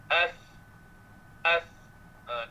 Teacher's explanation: Dia tertahan dengan ada lidah antara dua gigi hadapan. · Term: huruf tha